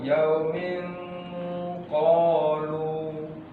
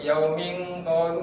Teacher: ketika ditahan, ikhfa itu juga diberikan gunnah Bu, dengung. Ya ditahan di situ.